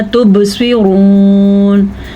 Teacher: बा पे भी कलकला हो रहा है